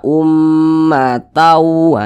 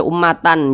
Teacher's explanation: cara membacanya dengan cara memasukkan kemudian disertai dengan ghunah disertai dengan dengungan · Jadi bunyi tanwin ini ya, bunyi tanwin ini dimasukkan ke huruf waw. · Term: idgham Bi ghunah, idgham bi gunnah